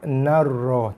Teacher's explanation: Lompat dan tekan pada ra sabdu narra tanpa dengung